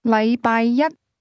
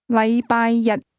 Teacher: The difference is that the word one, used with Monday, is pronounced with a high-level tone, while the word day is pronounced with a low-level tone.